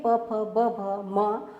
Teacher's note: प का उच्चारण स्थान ओष्ठ होता है प वर्ग में जितने भी वर्ण होते हैं प फ ब